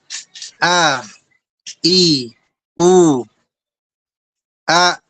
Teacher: jadi letaknya di tenggorokan bagian bawah ya, tempat dari 2 katup pita suara. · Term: hamzah